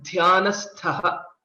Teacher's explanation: the starting letter Dh is a Mahaprana and ending letter Th is also a Mahaprana